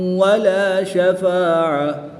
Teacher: گول تا کو وقف میں ہا ساکن سے تبدیل کر دیں گے